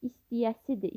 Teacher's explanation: İstəyəsidir sözündə T samiti D samitinə çevrilir.